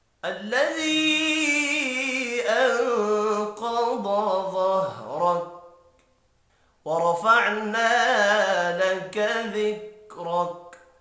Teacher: ورفعنا را پر پڑا جائے گا زبر کی وجہ سے، فعنا الف مدہ ہے، ایک الف کے برابر کھینچ کر پڑھیں گے۔